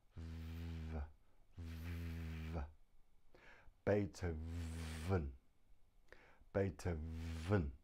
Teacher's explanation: The V is made by putting your teeth on your bottom lip and it vibrates, vibrates, vibrates.